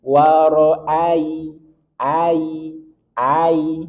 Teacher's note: ada ya sukun sebelumnya fathah, maka dia hukumnya lin. Sedikit kita alirkan tanpa penekanan. Waro'ai, ai, yang sampai ada penekanan.